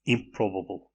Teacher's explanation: In improbable, the N becomes labial. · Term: regressive assimilation